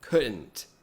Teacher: tem um bloqueio aqui, ó, na glote, um bloqueio do ar